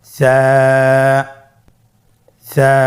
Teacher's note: স্ক্রিনে দেখা যাচ্ছে। সা হরফটির মাখরাজ হলো উচ্চারণ স্থান জিহ্বার আগা সামনের উপরের 2 দাঁতের আগার সঙ্গে লাগিয়ে উচ্চারিত হয়।